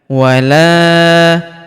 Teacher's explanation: huruf la kita panjangkan dua harakat karena terdapat alif di depannya